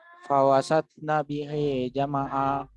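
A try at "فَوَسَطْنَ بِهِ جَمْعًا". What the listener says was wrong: Nah, itu mendingan. Tapi A-nya panjang, jangan lupa. Itu kaidahnya. Fawasatana bihi jam'a.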